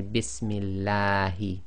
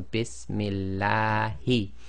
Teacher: the lam of Allah is always 2 lengths long